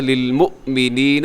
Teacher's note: للمؤمنین، یہاں واو کے اوپر حمزہ کی نشان ہے، تو یہ حمزہ پڑھا جائے گا، حمزہ جھٹکے سے ادا ہوتا ہے۔